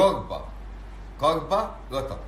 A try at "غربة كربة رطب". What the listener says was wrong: زين اظهر لسانك انت بتقول الراء.